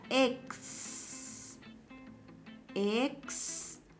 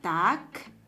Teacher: Está la secuencia KS, una oclusiva con una fricativa.